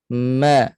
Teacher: makhraj mim di mana selain 2 bibir, dia juga di rongga hidung. Ma. Dia naik ke hidung lah.